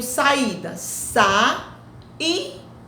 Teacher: São duas vogais em sílabas separadas. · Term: hiato